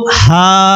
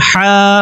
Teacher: একটি হলো হা, আরেকটি হলো হা। প্রথম হা যেটি, সেটা হলো কণ্ঠনালীর শুরু থেকে। দ্বিতীয় যে হা, সেটি উচ্চারণ হবে কণ্ঠনালীর মধ্যবর্তী স্থান থেকে।